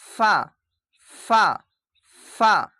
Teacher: 17 number মাখরাজ ফা ফা এখানে এরকম মুখ বন হবে না ফা নিচে দাঁতের সঙ্গে লেগেছে দেখেন ফা এরভাবে এখানে কি বলছে দেখেন নিচের ঠোটের ভিজে অংশ এবং সামনের উপরের দুই দাঁতের সাথে মিলিত মিলিয়ে উচ্চারিত হয় এখানে দেখেন ফা মুখটা দেখবেন ফা ফা ফা এভাবে উচ্চারিত হবে।